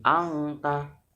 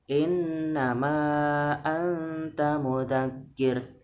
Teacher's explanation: Harusnya tetap persiapan ancang-ancangnya, samar-samarnya ke ta. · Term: Ikhfa